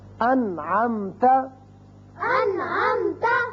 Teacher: نون ساکن کے بعد عین آ گیا، نون پر ہم نے اظہار کیا، نون کو ظاہر کر کے پڑھا